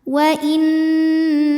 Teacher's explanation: nunnya bertasydid boleh juga disebut dengan wajibul ghunah atau Nun musyaddadah maka Nun ini didengungkan jadi bunyinya n tapi kita tahan